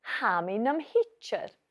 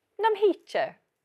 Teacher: Namo is usually shortened to nam. So it becomes hami nam hichir.